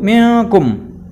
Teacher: Hukum nun sukun dan tanwin, ya, dibaca samar, ya. Apa yang dibaca samar? Nun sukunnya, ya, akan berdengung. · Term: ikhfa hakiki